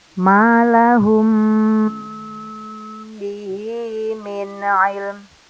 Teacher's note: Di sini mim sukun bertemu ba masuk ke hukum ikhfa safawi. Dibaca dengung 4 ketukan atau 4 harokat.